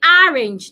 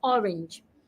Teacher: the o sound does not exist in American English Americans will pronounce words with o using the long a sound